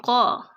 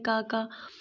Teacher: قاف کی جو آواز ہے وہ حلق سے نکلے گی